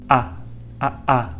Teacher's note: This sound is the throat stop sound that many people automatically pronounce when saying a word that starts with a vowel.